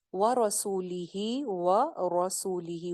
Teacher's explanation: लफ्ज जलाला को बारीक पढ़ते हैं, जैसे यहाँ पे बिल्लाही, लाम को मोटा नहीं करना, व रसूली ही, वाओ पे होंठ गोल, रॉ मोटी है जबर के साथ है